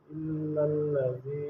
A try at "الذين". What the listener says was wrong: یہاں نون نہیں ہے، لام ہے.